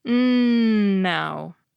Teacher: Unlike /p/, /t/, and /k/, which completely stop the airstream for a moment, the /n/ lets it keep going--through your nose!